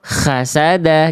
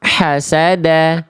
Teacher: kalau di sini ini tempat keluarnya huruf kho itu kayak lebih ada kerasak-kerasak, lebih agak kasar sedikit dia.